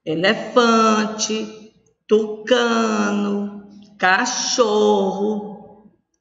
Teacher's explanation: a sílaba tônica de elefante fã de tucano de cachorro só então a sílaba tônica é a penúltima